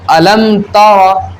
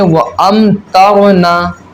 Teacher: اظہار شفوی ہوگا، یعنی غنہ نہیں کریں گے ہم، سمپل پڑھیں گے